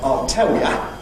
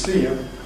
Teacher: Notice particularly that U has a weak form ya in London, which is used even in salient positions like sentence final. So I'll tell ya, meaning I'll tell you, and as a goodbye, see ya, which in our view is see you. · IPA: [jə]